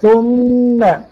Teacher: الغنة أولا مخرجها منين؟ من الخيشوم